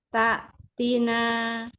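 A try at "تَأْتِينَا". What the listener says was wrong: Iya, tapi taknya kurang syiddah, Ibu. Tak gitu. Enggak, tapi tak tina.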